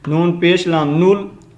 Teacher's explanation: اس نون کو ہم آگے لام کے ساتھ کنیکٹ کرنا ہے